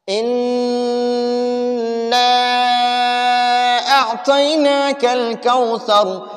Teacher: ان میں غنہ کرنا اور نا کو تھوڑا لمبا پڑھنا کیونکہ اس پر مد ہے. اِنَّا أَعْطَيْنَاكَ الْكَوْثَرَ، سا کو نرم پڑھنا، اور یہ را وقف کی وجہ سے ساکن ہو گیا، تو را وقف کی وجہ سے ساکن ہو گیا اور اس سے پہلے حرف پر سا پر زبر ہے تو اس را کو پر پڑھیں گے.